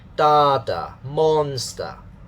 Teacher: the first syllable is stressed, carrying a higher pitch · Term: stress pattern and pitch pattern